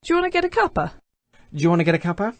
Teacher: we have an example of coalescent assimilation